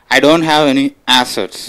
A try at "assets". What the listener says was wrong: No, assets you have to stress more.